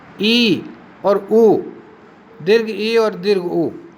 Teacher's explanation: जिन स्वरों के उच्चारण में मुख विवर अधिक से अधिक किंतु इतना कि उच्चारण हो सके अधिक से अधिक संकीर्ण रहता है वे संवृत कहलाते हैं। या सिकुड़ा हुआ रहता है जिसमें मुंह ई और ऊ, दीर्घ ई और दीर्घ ऊ, इसी प्रकार के स्वर हैं।